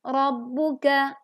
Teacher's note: Ro berharokat fathah, maka dibaca tebal. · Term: ro tafkhim